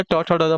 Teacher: ट ठ ड मुर्धा हो जाएगा